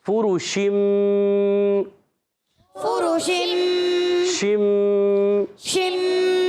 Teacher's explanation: اور پھر شین ادا ہوتا ہے وسط زبان وسط تعلق سے. شین میں ایک صفت پائی جاتی ہے جس کو کہتے ہیں تفشی، یعنی منہ میں آواز کا پھیل جانا